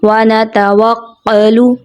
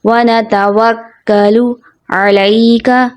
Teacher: یہاں یہ کاف باریک والا ہے جس کو عموماً موٹا پڑھ دیا جاتا ہے، جیسے وَنَتَوَكَّلُ جو درست نہیں.